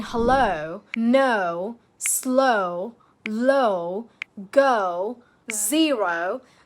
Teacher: Your mouth starts round and gradually closes as you say it, like the word hello is actually the classic tell here. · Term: the round O diphthong